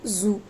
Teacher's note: And next one is z sound. It is voiced alveolar fricative sound.